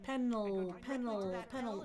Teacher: you can feel the sides of the tongue kind of opening up so that the air can escape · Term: regular L